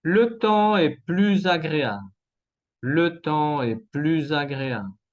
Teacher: La liaison está en verde entre la S de plus y la A de agréable.